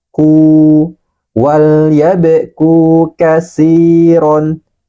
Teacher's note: Ku panjangkan dua harokat sebab ada waw mati sebelumnya huruf berharokat dhamma.